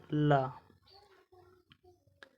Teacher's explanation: पार्श्विक व्यंजन जिसके उच्चारण में हवा जीभ के पार्श्व अर्थात बगल से निकल जाए।